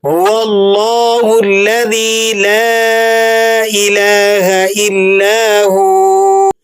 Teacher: ہا کی ہلکی اور سانسدار آواز ہوتی ہے،